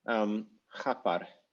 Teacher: So we rewind that to ch, and then this must be a stressed A type vowel in an open syllable. So this must be the next syllable, and there should be an R there.